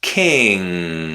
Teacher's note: the back of your tongue touches the top of your mouth. You stop the air and the air comes out through your nose, not your mouth. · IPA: /ŋ/